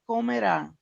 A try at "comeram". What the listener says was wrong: Aí só lembra que a pronúncia para o comerão é diferente. Comeram, tá? No passado. Comerão seria no futuro. Esse som mais aberto seria no futuro.